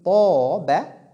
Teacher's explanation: quand je dis Toba, là, Ta est emphatique. La lettre Alif suit Ta aussi dans cette caractéristique, dans cet attribut.